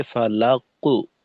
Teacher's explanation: ফালাকু আওয়াজে যেটা বোঝা যায় যে ঠোঁট গোল হয়ে যায় মোটা হরফের ক্ষেত্রে